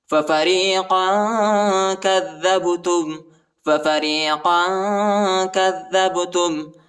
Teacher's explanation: با کو جھٹکے کے ساتھ پڑھیں گے، حروف قلقلہ کا حرف ہے